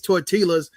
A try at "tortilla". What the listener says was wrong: No, the double L is pronounced Y.